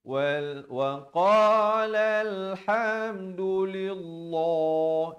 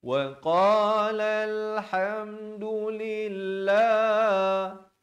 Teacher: Lafz jalalah di sini dibacakan dengan nipis.